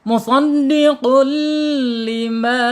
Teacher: Kalau bila guna itu melebur huruf ini ya, melebur tanwin atau tanwun ke huruf berikutnya dengan tidak dengung. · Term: idgham bila gunna